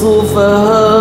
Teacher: sufaha alif bertemu dengan hamzah juga tapi dalam satu kalimah tu mad wajib jadi paling pendek kita ambil 4 harakat kat situ